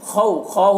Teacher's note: واو لینے سے نرم آواز کے ساتھ جلد پڑھیں گے